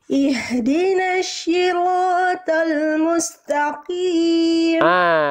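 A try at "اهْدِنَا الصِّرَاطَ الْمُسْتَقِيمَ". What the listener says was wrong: Jangan sampai ihdinas sy. Nah, itu kan yang Bunda lafalkan itu shin. Harusnya slod.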